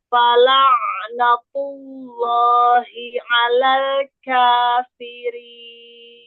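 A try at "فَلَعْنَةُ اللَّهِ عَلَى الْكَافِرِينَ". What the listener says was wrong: Nah, K-nya kan kebuka tuh, lebih kebuka. Kalau kalau dia K, fathahnya jelas, jadi nggak kafirin, ya. Karena dia nggak membuka atau tidak menjauhkan makhraj, nggak membuka rahang, tidak membuka mulut. Fathah itu dengan membuka mulut. Harokat itu yang fathah dengan menjauhkan, harokat fathah dengan menjauhkan makhraj. Kalau yang sukun dengan membenturkan makhraj, ya kan?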